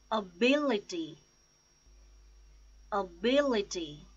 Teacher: The stress is on second syllable, bill, ability. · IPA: /əˈbɪlɪti/